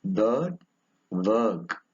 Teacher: it is a mid-high central tense vowel.